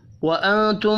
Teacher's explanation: نون ساکن کے بعد تا ہے، اخفاء حقیقی ہوگا